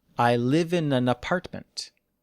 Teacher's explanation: Imagine the n sound goes on the next word.